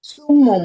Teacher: এরপরে দেখেন সুমুন, এখানে তানবিনের মধ্যে কিন্তু নুনের উচ্চারণ আছে, এখন এটাকে নুনের উচ্চারণটাকে মিমে উচ্চারণে কনভার্ট করতে হবে, তাহলে কি বলতে হবে সুমুম।